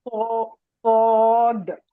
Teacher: وعلیکم السلام، الف با تا سا جیم حا وا دال زال را زا سین شین صاد ضاد ہاں یہ ہم کل او ڈسکس کرے تھے کہ صاد اور ضاد میں واؤ کی ساؤنڈ نہیں آنا، سوا سوا نہیں، صاد، اسٹریٹ وائس پڑھیے۔